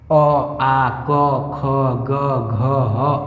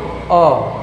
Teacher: अ आ क ख ग घ ह और ये दो बिंदु विसर्ग इसे कहां से बोला जाता है बाबू कंठ से बोला जाता है